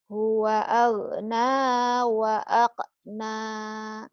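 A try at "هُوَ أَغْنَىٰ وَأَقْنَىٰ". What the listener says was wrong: Huwa bukan akna. Aghna. Huwa aghna wa aqna lagi.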